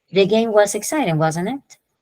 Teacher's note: it's falling intonation when you know that the other person is going to share your point of view or agree. · the falling intonation when you're more confident about the information in the statement and you're seeking agreement from The Listener